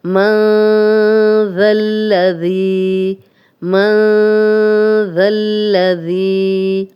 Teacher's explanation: من ذا الذی، من ذا الذی، نون ساکن آگے زال آ گیا، نون کی آواز کو تھوڑا چھپا کر کریں گے، جیسے تالو کے ساتھ نہیں لگنے دیں گے، اور زال کو نرم بھی پڑھیں گے۔ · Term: اخفا